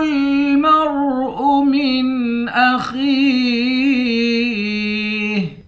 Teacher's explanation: خا کو یا کے ساتھ ملا کر ایک الف کی مقدار کھینچیں گے، خا کو موٹا پڑھیں گے، آخر میں ہا ساکن ہے۔